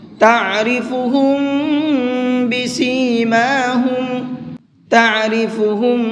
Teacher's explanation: میم ساکن کے بعد میں با آتا ہے تو وہاں پر غنہ اور اخفا دونوں کر کے پڑھتے ہیں